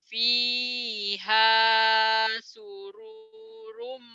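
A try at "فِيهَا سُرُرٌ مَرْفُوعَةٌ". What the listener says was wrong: Sururum, pendek. Sururum, nggak ada yang manjangin. Fiha sururum, sururum, sururum.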